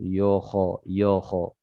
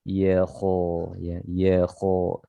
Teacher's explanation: Di sini di sini berdekatan huruf tebal dan huruf tipis. Ya tipis, kho-nya tebal. Jangan sampai ya-nya ikut tebal.